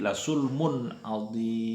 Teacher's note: Kenapa azimnya panjang? Karena di situ tempat berhenti, maka dia adalah mad arid disukun.